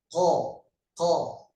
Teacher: Ketika mengucapkan qaf itu pangkal lidah naik ke atas.